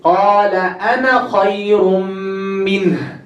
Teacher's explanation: You see, you drop the alif.